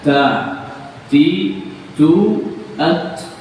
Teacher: Berarti ada desisnya, sehingga tidak akan terucap ta begitu saja, tapi ada sedikit anginnya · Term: hams